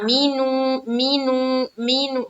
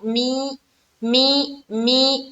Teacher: میم کو ہم جلد پڑھ رہے ہیں کیونکہ میم کے نیچے کیا ہے، زیر ہے، اور زیر کو جب بھی پڑھیں گے ہماری آواز معروف رہنی چاہیے، مجہول نہ ہو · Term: معروف آواز